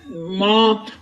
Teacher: मीम को एक अलिफ की मकदार खींच कर पढ़ना है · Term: खड़ी जबर